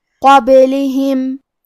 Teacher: من قبلہم کلمت قبلہم میں با پہ جزم ہے، کیونکہ با بھی حروف القلقلہ میں سے ہے، لہذا ہم یہ حرف کو ہلاتے ہوئے یہ کلمہ کو پڑھیں گے۔ قبلہم لام اور ہا کے نیچے زیر ہے، تو ہم یہ دونوں زیر کو برابر سے ادا کریں گے۔